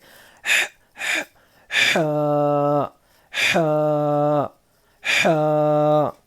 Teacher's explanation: حلق کے بیچ کے حصے سے یہ حا ادا ہوتا ہے. اور اس کو پرناؤن کرتے وقت منہ سے ایک ہلکی سی ہوا باہر جاتی ہے، خارج ہوتی ہے ہلکی سی ہوا، اور ہمارے حلق پر تھوڑا دباؤ ڈالنا ہے.